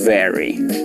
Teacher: la segunda la pronuncié con una letra labiodental, una B corta o una V, que la pronuncié poniendo mis dientes en el labio inferior y haciendo una vibración con las cuerdas vocales.